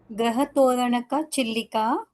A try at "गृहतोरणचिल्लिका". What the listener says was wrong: वो गृहतोरणका नहीं है, गृहतोरण चिल्लिका.